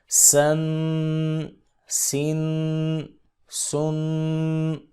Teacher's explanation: سیٹی کی آواز آنی چاہیے